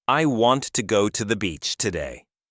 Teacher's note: Notice how I stress the words want, go, and beach. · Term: content words